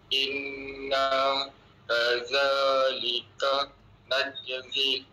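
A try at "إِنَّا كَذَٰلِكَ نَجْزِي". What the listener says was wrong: Ha zi panjang sikit. Najzi.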